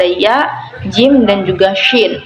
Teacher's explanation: Syajariyah itu atau lebih dikenal dengan bunyi yang keluar dari lidah bagian tengah, yaitu ada 3 huruf.